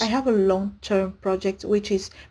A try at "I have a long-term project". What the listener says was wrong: that was a little awkward. I have a long-term project there. I have a long-term project. So I think that your sentence rhythm was a little bit off with that.